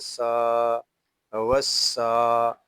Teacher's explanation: سین حروف صفیریہ میں سے ہے، اس کو ادا کرتے وقت سیٹی کی طرح آواز آئے گی